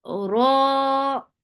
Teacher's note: Ra 2 counts long, make it heavy because whenever ra is with fatha, it is heavy.